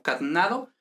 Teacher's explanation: en este caso se pierde la E, entonces sería algo así como catnado, y luego hay una metátesis.